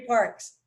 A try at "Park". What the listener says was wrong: By the way, Jerry is Park with no S.